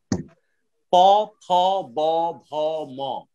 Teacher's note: প, ফ, ব, ভ, ম এর উচ্চারণ স্থান হচ্ছে ঠোঁট, এটাকে ওষ্ঠবর্ণ বলা হয়।